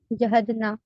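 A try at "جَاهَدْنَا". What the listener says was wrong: جاہد جیم کے بعد جو الف ہے وہ ظاہر ہونا چاہیے، جا، جاہدنا، جہد تو نہیں جاہدنا، ٹھیک ہے؟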